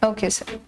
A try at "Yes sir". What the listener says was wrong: And when you say yes sir, your sir is a little muted. It appears that you're saying yes. So उसको थोड़ा सा pronounce करना है. Yes sir, yes sir. know, though it's a good style, but interviewing it's better to be a little more clear about it.